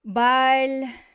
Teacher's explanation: the stress is on the final syllable, so it's going to stay on the final syllable in the prepositional case as well.